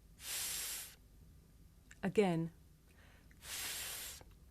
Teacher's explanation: I make the sound by sticking my tongue out just a little bit th, and blowing air between my tongue and my top teeth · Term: voiceless consonant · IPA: /θ/